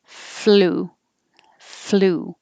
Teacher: So for the FL, I can put my tongue in the L position before I make my F. So I can say flu, flu.